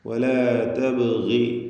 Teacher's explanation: ബാഇന്റെ സുക്കൂൻ ഖൽഖല സുഗ്റ നൽകി ശബ്ദം ചലിപ്പിക്കണം.